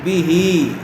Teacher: کھڑی زیر برابر ہوتی ہے یا مدہ کے، تو ہا کو کھینچ کر پڑھیں گے، لیکن جب یہاں پر وقف کریں گے تو ہا ساکن ہو جائے گی.